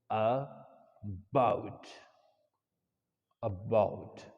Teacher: And shwa is, this vowel is a short vowel, right? It is a short vowel, short central vowel, short central vowel. It is called shwa.